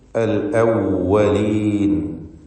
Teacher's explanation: വാവ് 2 ചുണ്ടുകളിൽ നിന്ന് തന്നെ വരണം. താഴെ ചുണ്ടും മേലെ പല്ലും ചേർത്ത് അവ്വലീൻ എന്ന് പറയരുത്, മറിച്ച് അൽ അവ്വലീൻ.